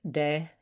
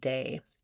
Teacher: The eh is more open than A